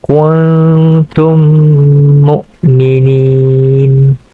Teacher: dibaca dengan memasukkan mim Sakinah ke dalam huruf mim dengan dengung dengan dengung dengan kadarnya dua harakat sebagai contoh kuntum mukminin dan · Idgham mislain berlaku hukumnya apabila mim as-sakinah bertemu dengan mim itu sendiri, dibaca dengan memasukkan mim sakinah ke dalam huruf mim dengan dengung dengan kadarnya 2 harakat